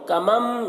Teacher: نون کو میم سے بدل کر پڑھیں گے اخفا کے ساتھ میں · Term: اقلاب